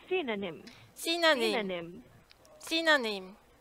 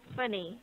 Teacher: Remember, this is the stress, so the first syllable goes high a little bit